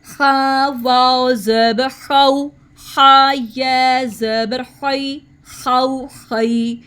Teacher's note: اب خا کو ہم نے تھروٹ کے فرسٹ سے اور ہیوی ساؤنڈ میں ادا کرنا ہے